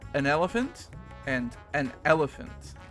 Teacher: before certain words that start with a vowel you have a little glottal stop so you like you're like closing off the Airwaves as you say the vowel